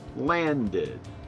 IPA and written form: lændɪd (landed)